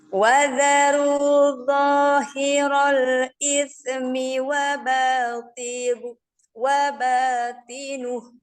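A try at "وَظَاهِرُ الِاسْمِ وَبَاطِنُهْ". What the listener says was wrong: Ini ismi jadi ismi, ada se-nya.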